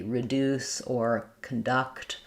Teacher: the D in conduct is the same as the D in duct, where I can actually stop the air and release it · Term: true D